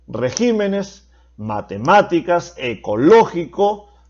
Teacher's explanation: Son las que llevan la mayor fuerza de voz en la antepenúltima sílaba. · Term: palabras esdrújulas